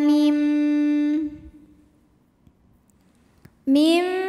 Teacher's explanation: huruf ba maka nun sukun dibunyikan ee ganti diganti bunyinya jadi bunyi mim disertai bunyi dengung tahan mim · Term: iqlab